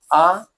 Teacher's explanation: आ का उच्चारण भी कंठ से होता है